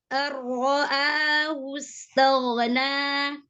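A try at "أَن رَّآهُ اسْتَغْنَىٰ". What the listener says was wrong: Ar-ra'ahu, wus, jangan wus, hu. Jelaskan huruf H-nya. Dhammahnya di H dijelaskan lagi. Ar-ra'ahu istaghna. Alirkan ghainnya.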